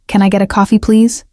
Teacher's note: Listen to the polite rising tone. It is a request, not a demand. Friendly and natural.